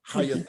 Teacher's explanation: So this means pronounce it shorter. Instead of the ya, the long A, it's gonna now be a short A.